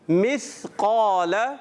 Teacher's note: سا کی ادائیگی کلیئر کریں گے, سیٹی سے نہیں. سین اگر اس کو سا کی بجائے سین پڑھیں گے تو پھر سیٹی کی آواز آئے گی.